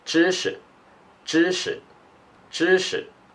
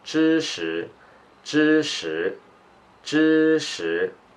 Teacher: when you speak really fast, you just read it as a neutral tone for this 识 character. It sounds a little bit like 知识知识知识 But when you read slowly, it's like 知识知识知识 That's knowledge.